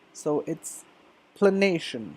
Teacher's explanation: So the schwa is right after the l sound there.